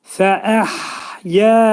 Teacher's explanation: hə hərfinin məxrəci boğazın ortasındadır